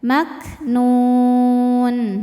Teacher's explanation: Huruf yang disukunkannya nun, maka nun ini panjang boleh dua atau empat atau enam harakat asal konsisten dalam sekali baca. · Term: mad arid lukun, mad arid li sukun